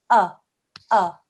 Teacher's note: it makes is very like an alif ah ah okay so you just say ah you don't make any sort of hamza sound